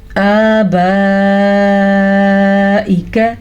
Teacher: اس مد کی مقدار تقریباً 4 سے 5 سیکنڈ کے درمیان تک ہے